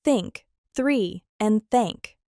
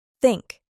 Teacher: It is called voiceless because your vocal cords are not vibrating when you make this sound. It is just air flowing through. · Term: voiceless th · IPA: /θ/